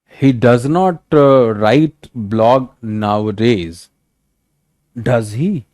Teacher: The fall, rise, dipping intonation, the pitch falls, then rises.